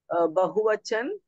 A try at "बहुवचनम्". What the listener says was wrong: Don't say बहुवचन, वचनम। वचनम। एकवचनम, द्विवचनम, बहुवचनम।